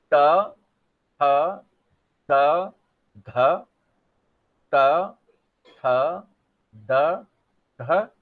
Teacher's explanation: आपकी जीभ जाती है और दांत को छूती है, तो इसको क्या कहते हैं, इसको दंत ध्वनि कहते हैं।